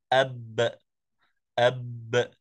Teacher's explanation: باء ساكنه مقلقله تخرج بتباعد الشفتين دون تباعد الفكين يعني فقط من الشفتين التباعد اب اب والباء المتحرك مفتوحه يعني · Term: القلقله